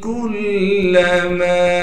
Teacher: اسی طریقے سے کاف کو باریک کر کے پڑھیں گے اور کاف کو آگے لام مشدد سے ملا دیں گے۔ میم کے بعد الف مدہ ہونے کی وجہ سے میم کو ایک الف کی مقدار کھینچیں گے